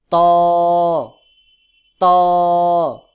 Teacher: ত কিন্তু শক্ত করে গোল মতো করে একটু চাপ দিয়ে উচ্চারণ করতে হয়